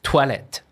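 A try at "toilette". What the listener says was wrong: Toi. OI in English is typically oi, right? Oil. So toilet. But actually in French, it's actually toi. Toilet.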